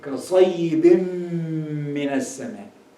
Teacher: And it is followed by mim. So here, the rule is idgham, so you combine them together, with ghunna. So the ghunna should be very clear. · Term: idgham with ghunna